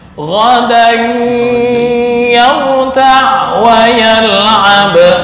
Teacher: untuk ghadan ini ada tanwin bertemu ya itu masuk ke khoisyum ya